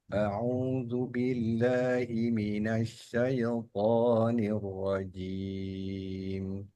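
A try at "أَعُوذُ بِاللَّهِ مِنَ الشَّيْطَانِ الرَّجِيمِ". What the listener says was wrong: Ada sedikit itu pantulan. Syaitan.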